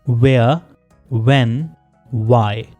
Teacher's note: व साउंड को दोनों लिप्स के साथ प्रोड्यूस किया जाता है, जैसे उर्दू में हम वाओ को प्रोनाउंस करते हैं।